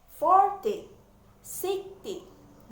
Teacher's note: penekanannya ada di suku kata pertama